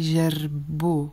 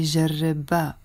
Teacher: And because فستان is masculine, we will say جربو with the O in the end. If it was feminine, we were going to say جربا with the A in the end.